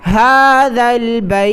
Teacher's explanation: ذال کو لام کے ساتھ ملائیں اور ذال میں زبان کی نوک باہر نکالیں